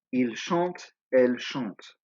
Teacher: Now you'll notice there's an ENT at the end, but it is silent.